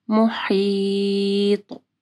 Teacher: طوا کو جو ہے موٹا پڑھنا ہے اور طوا کے اوپر جو ہے کلکلا بھی کرنا ہے